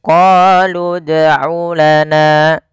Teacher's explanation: huruf dal ini harus kita pantulkan bunyi suara dalnya, karena huruf dal termasuk salah satu sifatnya adalah qalqalah, yaitu memantul.